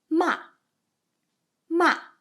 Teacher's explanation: So like ma, ma. And come to the fourth tone. It's very harsh down sound. Finish up really quick.